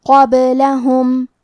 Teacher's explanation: کلمت قبلہم میں حرف القاف کو موٹی آواز میں پڑھیں گے، کیونکہ با پہ جزم ہے اور حرف البا بھی حروف القلقلہ میں سے ہے تو ہم یہ حرف کو ہلاتے ہوئے یہ کلمہ کو پڑھیں گے، قبلہم۔